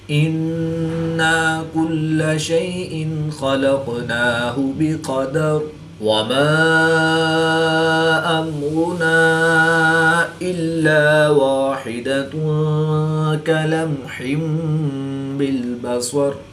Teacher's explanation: دو زیر کی تنوین کے بعد حرف با ہے تو یہاں پر اقلاب ہوگا، دو زیر کی تنوین کو میم سے بدل کر غنہ زمانی کر کے پڑھیں گے